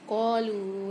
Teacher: قالو لام کے ساتھ واو ساکن ہے، لام کو ایک الف کی مقدار کھینچیں گے، قاف کو بھی ایک الف کی مقدار کھینچ کے پڑھیں گے، اس کے ساتھ الف آ رہا ہے۔